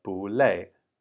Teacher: And now 不, I've put it in a second tone because it actually becomes a second tone when it's in front of a fourth tone